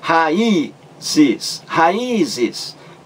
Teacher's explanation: Raízes. Porque o I aí forma hiato. É a sílaba mais forte. Leva acento, o acento agudo.